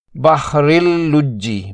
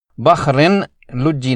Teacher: قاعدہ یہ ہے کہ اگر تنوین یا نون ساکن کے بعد حروف یرملون یعنی یا، را، میم، لام، واو اور نون میں سے لام یا را آ جائے تو وہاں ادغام بغیر غنہ ہوتا ہے، ادغام تام یعنی مکمل ادغام۔ اس کی ادائیگی کے لیے تنوین کے پوشیدہ نون کی آواز بالکل ختم کر دی جائے گی اور را کو براہ راست لام سے ملا کر پڑھا جائے گا۔